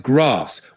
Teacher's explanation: In British English, especially southern accents, it's pronounced like grass with a longer a. In American English, it's usually grass with a shorter a.